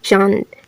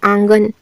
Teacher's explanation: जैसे यहाँ पर देखेंगे चांद, ठीक है, चांद, चांद लिखिए यहाँ पर आंगन, ठीक है, चांद है आंगन, तो ये इसका उच्चारण कहाँ से हो रहा है, नाक और मुंह दोनों से होगा, वो हमारा कहलाता है अनुनासिक